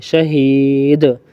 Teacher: یہاں دال ہے آخر میں, اس کے اوپر سکون آ جائے گا وقفاً میں, تو اس کو قلقلہ کریں گے, جھٹکا دیں گے